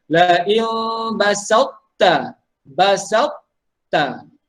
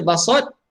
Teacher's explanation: Dia idgham tapi dia bukan idgham sempurna. Dia tak masuk habis. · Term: idgham nakis